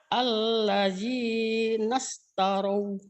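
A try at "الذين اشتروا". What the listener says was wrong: Alladzi, jangan allaji. Alladzi nashtarau. Alladzi nashtarau.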